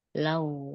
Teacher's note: tekan wawnya ya, dia nabar itu